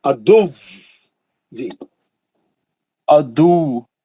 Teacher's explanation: ادو واؤ گاڑا ہے بہت، دو تجدید ہے اس پہ. ادو بول کے ہلکا نہیں پڑھیں گے، واؤ کو ہلائیں گے پکڑ کے، سختی سے روکیں گے اس کو، واؤ پہ شدت کریں گے